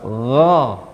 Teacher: Huruf ghain ada di pangkal, di puncak tenggorokan. Caranya jangan sampai keluar nafas.